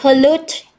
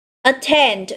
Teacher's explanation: pollute cũng nhấn vào âm thứ hai và attend, đây là động từ cũng sẽ nhấn vào âm thứ hai